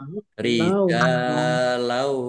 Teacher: Fathah tanwin bertemu dengan huruf wawu, bacaan idgham bi gunnah, masuk dengan mendengung, yaitu mendengung wawu, ditandai wawunya ada tasdidnya, ditahan biar tampak dengungannya.